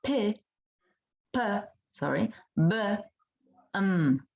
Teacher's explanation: they are bilabial sounds because the upper lip and the lower lip come in contact to produce these sounds